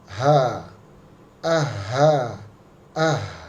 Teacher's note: Huruf H juga sama di posisi huruf hamzah di jakun kita, tetapi dibaca mengalir dan lebar ya.